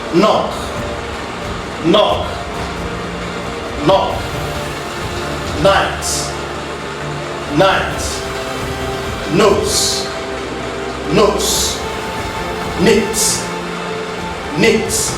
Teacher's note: When you look at the sound, while the soft palate is lowered to allow the airstream pass through the nasal cavity, the tip of the tongue forms a closure with our alveolar ridge for the production of the Nasa. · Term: nasal sound